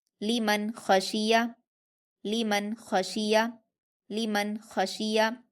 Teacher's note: نون ساکن کی آواز کو ظاہر کر کے جلدی پڑھیں گے بغیر غنہ کے